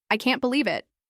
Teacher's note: For example, in a sentence like, "I can't believe it," the tone of your voice rises on believe and falls on it, showing excitement or disbelief. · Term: intonation